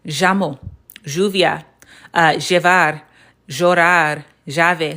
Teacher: some people in Argentina, some people in Uruguay that will pronounce this as j, almost like a Z sound